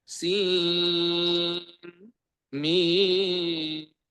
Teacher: tidak diimalahkan toknya, tetapi to, sin, mim dibaca izhar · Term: izhar dan sakta